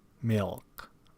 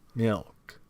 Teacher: words such as milk involve a velar lateral